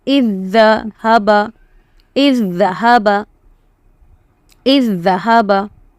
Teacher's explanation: That is the tashdeed zal. You will not see the first zal because it is completely combined into the next zal. So alif zal zer is, zal zabar z, is zahaba, is zahaba, is zahaba.